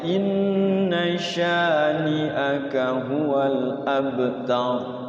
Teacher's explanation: Wanhar inna sya-nya ini suka dipanjangin, dikirain mad wajib padahal dia mad tabi'i. Inna syani'aka enggak boleh panjang-panjang.